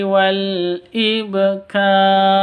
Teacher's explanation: selanjutnya begitu ini juga Wal ibkar wasabbih biam [Musik] I ibkar ba sukun ba mati artinya qolqolah harus dipantulkan ibkar karena huruf Qalqalah termasuk huruf Qalqalah Ba Itu tandanya sukun